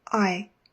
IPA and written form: aɪ (Ii)